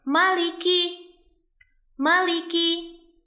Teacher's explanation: huruf mim di sini sering dibaca panjang padahal huruf mim ini bukan berhadapan dengan alif. Jadi bacanya jangan panjang ya, bacanya pendek.